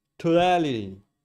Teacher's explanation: So that first syllable is now not stressed because we're shifting the stress to the second syllable, making it a weak T. That O in toe is most likely going to reduce to a schwa